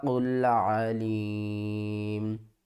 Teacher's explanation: میم کے اوپر جو پیش ہے یہ ختم ہو جائے گی، میم ساکن سے پہلے حروف مدہ، اس کو ہم نے 3 الف کی مقدار کھینچ کر پڑھنا ہے۔